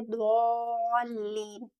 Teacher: इसको हमें हमेशा हैवी साउंड के साथ अदा करना है